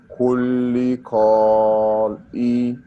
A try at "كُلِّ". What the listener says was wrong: kulli we said that we will not pronounce this alif kulli kulli insanu